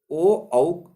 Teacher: ओ दौ तौ कंठोष्ठम। ओ और औ का जो स्पर्श स्थान है वो कंठ यानी गला और ओंठ